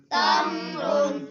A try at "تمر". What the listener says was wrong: تا سے تمرون، تم کلکلا نہیں کرنا، تمرون.